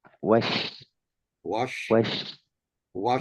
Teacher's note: Dia berada di Wash berada di lidah tengah, naik nempel di atas langit, dan kemudian suara itu ada di mulut, Pak Ustadz, menyebar di mulut. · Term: Huruf Tafashi